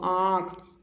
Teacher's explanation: बच्चों देखना जैसे की आंख बोल के देखो आंख यानी की मुंह और नाक नासिक से और मुंह से आवाज निकलते है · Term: अनुनासिक